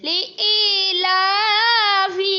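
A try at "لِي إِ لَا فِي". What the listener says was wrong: لمبا نہیں کیا یا لی ای لا فی.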